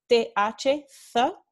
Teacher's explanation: TH, th, esto es el sonido que se representa con este símbolo. Y esta consonante interdental fricativa sorda, th, se usa en el norte y el centro de España.